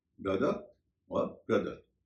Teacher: पहले से जानते होंगे और द ही उच्चार करते होंगे ब्रदर अमेरिकी उच्चारण में र का उच्चारण होता है और ब्रिटिश उच्चारण में र का उरण नहीं होता है